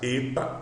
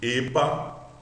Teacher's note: Eta de Epa, um som fechado de E.